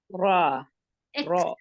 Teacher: right behind your two front teeth, the irregular, the bumpy part of the palate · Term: makhraj of ra